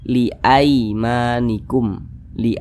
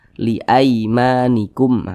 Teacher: itu mudah dilunakkan ya tidak memberatkan jadi dibaca tu Li Li jangan sampai condong ke e jangan dibaca liimanikum jangan tapi dia mudah dilunakkan Li liimanikum begitu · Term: huruf linah